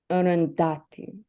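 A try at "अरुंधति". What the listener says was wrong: Very close, but both the A sounds here are the inherent sounds. So it's Arundhati.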